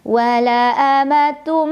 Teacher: Idgham Bighunnah karena ada tanwin dhomah bertemu huruf mim cara membacanya tanwin dhomah dileburkan atau dimasukkan ke huruf mim sambil berdengung